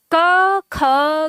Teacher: के ख में कंपन ना के बराबर है बिल्कुल ना के बराबर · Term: अघोष